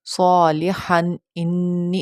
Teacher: جب اظہار کریں گے نا تو تھوڑا سا نیزل ساؤنڈ آئے گا، تھوڑا سا لمبا کر کے پڑھیں گے تنوین کو.